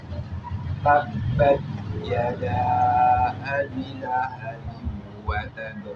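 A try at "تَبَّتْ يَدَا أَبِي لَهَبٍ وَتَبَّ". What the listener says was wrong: Panjang ya. Yada abi. Panjang abinya. Abi. Ya, laha. Lahabiu. Baik, dari abi ya, dari abi lahabiu. Jadi ha ya, bukan la'a, tapi laha. Ya, lahabiu wa tab.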